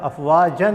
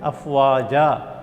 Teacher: دو زبر کی تنوین کو الف سے بدل کر ایک الف کے برابر لمبا کھینچنا ہے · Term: وقف بالابدال